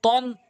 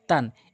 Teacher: উচ্চারণের দিকটা একই, জিহ্বার আগা উপরে ২ দাঁতের গোড়া, কিন্তু পার্থক্য হচ্ছে তটা মুখ গোল হবে, তাটা মুখ ওসার হবে।